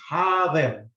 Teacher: it becomes a double vowel, so it's a ha, long.